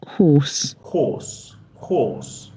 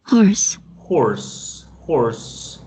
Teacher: Mira que la R no está. ¿Sí ven? La R no está.